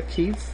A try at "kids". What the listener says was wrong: Notice how you said I met her when we were kids, but that's not pronouncing that vowel sound correctly. So instead of kids, you want to say kids.